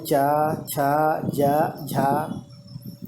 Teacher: जीभ का ऊपरी भाग तालु में सटता है, इसलिए हम कह सकते हैं कि इसका उच्चारण स्थान तालु है। चूँकि इसका उच्चारण स्थान तालु है इसलिए इन वर्णों का नाम भी है तालवी वर्ण। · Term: तालव्य वर्ण